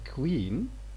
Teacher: this k, of course, it's aspirated because it's a voiceless stop at the beginning of the word, and there's a small u here below it, which shows that it is labialized here. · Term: labialization